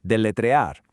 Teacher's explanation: In Spanish, the single R is a soft tap. It's not a hard English R.